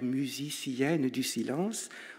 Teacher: Au fond, la réussite de Sainte est là, dans ce dernier vers, qui fait ce qu'il dit, puisqu'il est formé des voyelles les plus fermées de la langue, le U et le I